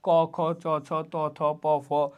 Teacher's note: কিছু ব্যঞ্জন উচ্চারণে স্বরতন্ত্র কম্পিত হয়, এগুলো হলো ঘোষ, এবং কিছুর ক্ষেত্রে স্বরতন্ত্র কম্পিত হয় না, সেগুলোকে বলা হয় অঘোষ